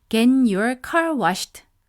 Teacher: get과 your 사이에도 nasal insertion이 생길 가능성이 큽니다.